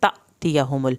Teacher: हत्ता तअतियहुमुल बय्यिना, हत्ता ता की खड़ी ज़बर को खींचे, तअतियहुमुल, यहाँ पर अलिफ के ऊपर जब जज़्म आ गई है तो हल्का झटका लगेगा